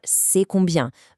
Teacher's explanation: For the absolute easiest, most informal way to ask a price, just rely on raising the tone of your voice at the very end